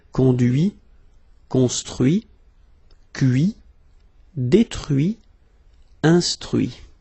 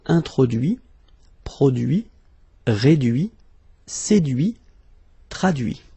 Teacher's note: so you can notice that even if I put this final T, so as usual, I don't pronounce it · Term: final T not pronounced